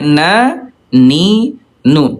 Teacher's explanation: huruf nun ayah bunda, dari segi udara dia jaher tidak keluar udara ya